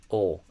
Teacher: we're aiming for ol, where the tongue kind of goes back towards the throat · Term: dark L